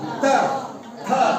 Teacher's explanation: त था बोलेगा तो तुम्हारा जिह्वा जो है सो दांत में सट जाता है, त आ जाता है त थ।